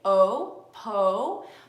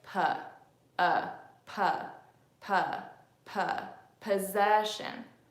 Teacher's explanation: aren't engaged right Oh PO but remember I told you that the schwa is relaxed neutral your lips cannot form an O shape if you're doing the schwa so instead I have to say puh puh puh puh possession